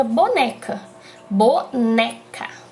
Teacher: o né fica mais forte então a sílaba tônica tá na penúltima sílaba